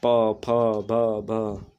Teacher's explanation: जिन व्यंजनों का उच्चारण करते समय दोनों ओष्ठ श्वास का अवरोध करती हों, उन्हें ओष्ठ व्यंजन कहते हैं।